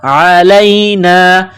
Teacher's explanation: عین گلے سے نکلتی ہے، گلے کے درمیان سے زور لگا کر نکالا جاتا ہے عین کو. لام کو یا کے ساتھ پلس کرنا ہے.